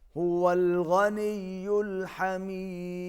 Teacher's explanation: هو الغني الحميد، دال پر قلقلہ ہوگا